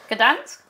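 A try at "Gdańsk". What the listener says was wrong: Number six, Gdansk. Yeah, good.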